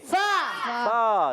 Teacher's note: اور فا کی ادائیگی ہوگی, فا پر پیش ہے, اوپر والے دانت جب نیچے والے ہونٹ کے تر حصے سے لگتے ہیں تو ادا ہوتا ہے فا